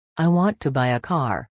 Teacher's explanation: The important words are want, buy, and car. The little words like to and get super small. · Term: stress